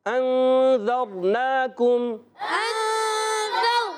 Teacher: زر نہیں، ذر را کو پر کریں گے